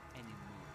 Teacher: British English, you might have anymore without pronouncing the final R.